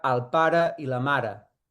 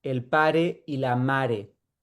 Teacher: Y en posición átona tiene la E neutra